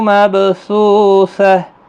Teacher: مب با ساکن پر قلقلہ ہوگا ، سو واو مدہ ہے اور ہا ساکن پڑھا جائے گا